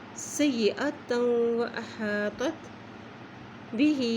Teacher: با کے نیچے کھڑی زیر ہے اس لیے اس کو بھی ایک حرکت لمبا پڑھیں گے